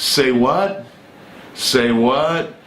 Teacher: With this rising intonation on the what, it means you're challenging what someone says, or you don't believe it's true.